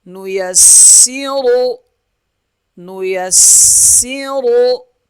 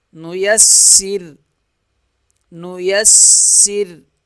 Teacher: را پیش رو، را موٹا پڑھیں گے، نو یسیرو، نو یسیرو، وقف، وقف کی صورت میں را پتلی پڑھی جائے گی، کیونکہ وقف میں را کو ہم ساکن پڑھیں گے اور ساکن سے پہلے سین جو ہے اس کے نیچے زیر ہے، زیر کی وجہ سے را پتلی ہو جائے گی۔